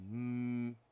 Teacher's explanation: We put our lips together and then we go through the nose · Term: bilabial nasal